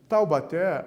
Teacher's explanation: Taubaté, a sílaba tônica é o té.